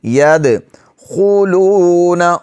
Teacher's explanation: خو کو موٹا پڑھیں گے، واو حرف مدہ ہے، اس کو 1 الف کی مقدار کھینچیں گے